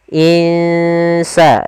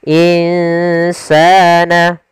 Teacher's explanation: Kita samarkan nunnya ke huruf sin. Insa, dan itu ikhfanya ikhfa tipis. Insana. Kemudian pada lafal sa ada mad tabi'i, yaitu ditandai dengan fathah bertemu dengan alif.